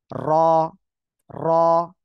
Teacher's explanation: আছে র র অর্থাৎ আপনি যখন এই অক্ষরটা উচ্চারণ করবেন জিহ্বার আগার পিঠ তার বরাবর উপরে তালুর সঙ্গে লাগিয়ে আপনার উচ্চারণ করতে হবে